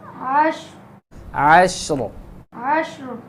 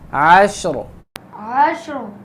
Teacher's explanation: وقف کریں گے تو پھر را موٹی ہوگی، کیونکہ قاعدہ ہے را ساکن، اس سے پہلے حرف ساکن، اس سے پہلے زبر ہو، جیسے یہاں پہ ہے، تو اس را کو موٹا کر کے پڑھیں گے.